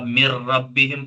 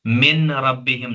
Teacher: جب آپ مر ربہم پڑھیں گے تو یہاں پر آپ دیکھ رہے ہیں کہ نون کو را کے ساتھ ملا کر ہم پڑھ رہے ہیں، آواز پوری نہیں نکل رہی ہے نون کی، ٹھیک ہے۔ من ربہم نہیں پڑھتے ہیں۔